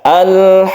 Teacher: dipanjangkan dulu sampai tiga Alif atau enam ketukan barulah kita itu membaca atau barulah kita tasdidkan huruf tersebut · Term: mad lazim